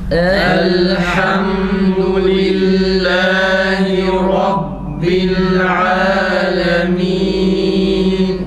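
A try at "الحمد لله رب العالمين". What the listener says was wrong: Burayı kalın söylerken fazla abartmayalım yalnız. Bir de mimde duraksama gibi olmasın. Elhamdü değil, yavaş okusak dahi biraz daha seri bir şekilde o mim harfini geçelim.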